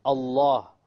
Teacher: Notice when I say Allah, look at the lamb, how heavy it is.